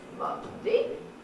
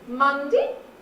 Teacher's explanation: wherever you start, the next syllable is higher than the starting point, and that's what we call a rising tail